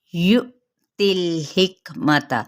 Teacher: یؤتی الحکمۃ، یہاں پہ ہم جھٹکا دیں گے، تا کی زیر کو لام کے ساتھ ملائیں گے، لیکن لام کو ہلانا نہیں